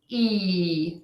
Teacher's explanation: your tongue tip is near the front of your mouth near your front teeth but it is not touching your front teeth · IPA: /i, ɪ/